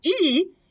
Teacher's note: other type is how high your tongue is so for example if you say e your mouth is pretty close so it's pretty pretty high right so because we are almost touching the top of your